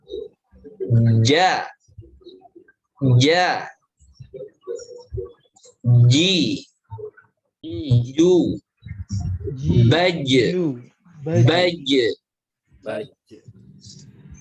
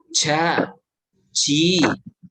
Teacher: Jim itu memiliki sifat jahar. Jahar, bukan hams. Itu artinya jangan keluar angin.